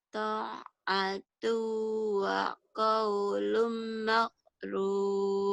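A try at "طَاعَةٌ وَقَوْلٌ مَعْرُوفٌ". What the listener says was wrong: Ma'ruf ya, Jawa maghrib. Ma'ruf ya. Ta'atu wa qaulun ma'ruf. Walaupun udah di Jepang, Jawanya masih ada makruf, ma'ruf ya. Tapi nanti insya Allah dilatih aja ma'ruf, ma'ruf.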